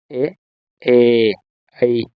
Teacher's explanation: ಕಂಠ ಮತ್ತು ದವಡೆಯ ಸಹಾಯದಿಂದ ಉಚ್ಚರಿಸತಕಂತ ಅಕ್ಷರಗಳು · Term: ಕಂಠತಾಲು